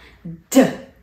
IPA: d